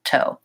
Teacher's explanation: I'm also touching just the tip of my tongue behind my teeth and it's sealing off the air to build some pressure just in one spot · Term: American T